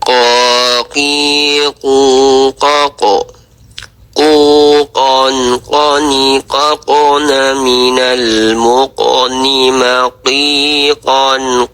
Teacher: letak makhrajnya itu di lidah, pangkal lidah paling belakang dan langit-langit mulut yang berdaging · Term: huruf qof